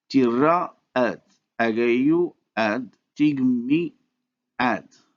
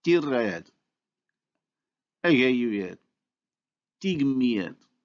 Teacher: the native speaker proceeds to the insertion of a glide to separate the two vowels, and so these are pronounced tirayed, agayuyed, tigmiyed.